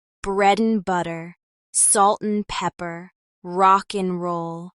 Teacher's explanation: the D in and often disappears when it's between two consonants